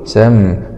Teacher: ميم سكون مع الإظهار الشفوي